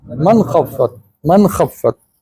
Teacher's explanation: तो नून साकिना के बाद खा आ गया हरफ हल्की में से, तो नून को ज़ाहिर करके पढ़ते हैं। यहाँ नून की आवाज़ लंबी नहीं होगी। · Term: इजहार